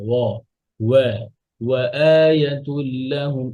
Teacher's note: ওয়াওটা হচ্ছে লাইট হরফ, পাতলা হরফ, তাহলে যেন অ না হয়